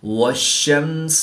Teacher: میم ساکن کے بعد حرف با اور میم کے علاوہ حرف سین ہے تو یہاں پر اظہار شفوی ہوگا، غنہ نہیں